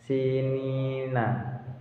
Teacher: Kemudian ada sinina, sin itu bacaan mat tabi'i karena sin berharokat kasroh bertemu dengan ya berharokat sukun, yaitu panjang bacaannya satu alif. Kemudian nin itu merupakan bacaan mat alif sukun di mana ada mat bertemu dengan huruf sukun karena waqaf.